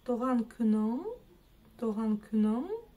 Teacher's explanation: мы тянемся языком к верхнему небу, произнося букву Н обыкновенную, но не дотягиваемся. И именно в этот момент у нас образуется вот этот вот сонорный звук или английский дифтонг в слове English, good morning, good evening, вот такие вот дела.